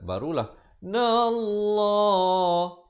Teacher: Lafz jalalah dibaca tebal 2 harakat.